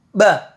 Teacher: huruf ba ini termasuk yang ringan diucapkan dikarenakan keluar dari bagian bibir kita maksudnya atau makhrojnya keluar dari bagian bibir seperti